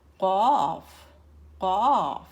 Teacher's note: Cough comes from the back of the tongue. Very, very back of the tongue.